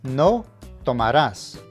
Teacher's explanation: you will pronounce the main verb with the emphasis on the last syllable, as indicated by the accent